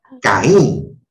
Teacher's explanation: La mayor fuerza de voz está resaltando la vocal cerrada.